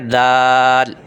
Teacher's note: یہ زبان باہر نہیں نکلی ہوئی، اندر جڑ سے لگی ہوئی ہے، یعنی اوپر سامنے والے 2 دانتوں کی جڑ سے لگی ہوئی ہے زبان، اور ہم پڑھ رہے ہیں دال، ٹھیک ہے۔